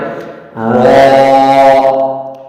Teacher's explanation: را کو منہ بھر کے آواز نکالنی پڑے گی اور را کو پر پڑا جائے گا۔